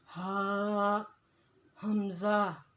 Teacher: انتہائی حلق، یعنی کہ حلق کا وہ حصہ جو ہمارے سینے کی طرف ہے، وہاں سے ہا اور حمزہ یہ دونوں ادا ہوں گے، ہا حمزہ۔